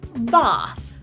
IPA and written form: bɑθ (bath)